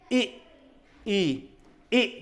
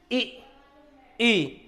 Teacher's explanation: आप बोल के जब देखोगे तो हमारी हल्की सी जीभ ऊपर टच हो रही, तो इसलिए इनका नाम रख दिया तालव्य